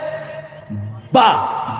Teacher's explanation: یہ شفوی ہے، بے با منہ بند ہو جاتا ہے